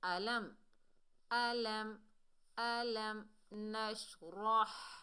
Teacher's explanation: کا اظہار کریں گے، یعنی اکفا غنہ کچھ بھی نہیں ہوگا، میم کو ظاہر کر کے پڑھیں گے